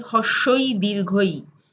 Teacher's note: And rosho is the actual word in the spelling, but when we speak of it in colloquial Bengali, the r is dropped and the sound for rosho becomes hosho. So you might hear people say hoshoi dirghoi.